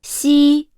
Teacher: the tongue does not make contact with the upper palate when pronouncing it. Therefore, when pronouncing 西 it is necessary to quickly control the tongue's surface, maintaining the position and strength of the pronunciation.